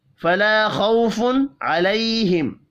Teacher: میم ساکن کے بعد واو ہے، اظہار شفی ہوگا، غنہ نہیں کرنا۔